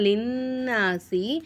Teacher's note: நூனுக்கு மேலே சத்து வந்தனால நூனு நம்மளால அழுத்தி உச்சரிக்கணும்.